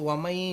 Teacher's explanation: nun mati bertemu ya tu dia dengungkan dua harakat. Dia tak tahu itu namanya idgham ma'al gunnah.